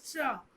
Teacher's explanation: इसके उच्चारण में हमारा जीभ दांत के ऊपर वाले हिस्से जो मांसल एरिया उसको मूर्धा बोलते हैं, उससे टच होता है, तो इसको हम मूर्धन्य श बोलते हैं।